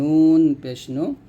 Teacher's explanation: নুন জিহ্বার আগার তার বরাবর উপতালার সঙ্গে লাগবে